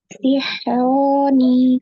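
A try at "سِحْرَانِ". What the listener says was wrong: Lagi, kurang panjang. Sihroni.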